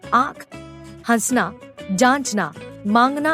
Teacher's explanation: ऐसे स्वरों का उच्चारण नाक और मुंह से होता है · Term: अनुनासिक